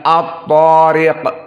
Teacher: ta dalam keadaan juga darajatul ula karena fathah dan setelahnya mad